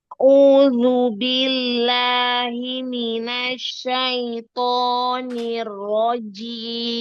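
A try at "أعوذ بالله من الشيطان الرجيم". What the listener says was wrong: Linnya jangan masuk hidung. Asyaito.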